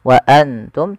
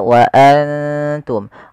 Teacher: kita samarkan nunnya kepada huruf ta dan ditahan dua harakat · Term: ikhfa